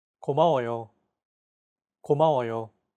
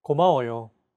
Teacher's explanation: Each syllable is pronounced for an equal amount of time. 고마워요. Since Korean is a syllable-timed language, there is no word stress.